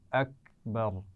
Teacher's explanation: اکبر، اس میں را کو موٹا پڑھنا ہے اور کاف پر قلقلہ نہیں ہونا چاہیے. ٹھیک ہے، یہ باریک کاف ہے.